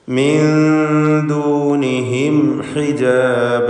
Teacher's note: സാക്കിനത്തായ നൂൻ ശേഷം ദാൽ. ഇവിടെ നൂനിനെ ഇഖ്ഫാ ഹഖീഖി നൽകി മറച്ചു മണിക്കണം.